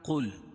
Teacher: قل قاف کو موٹا پڑھیں گے کیونکہ حروف مستعلیہ میں سے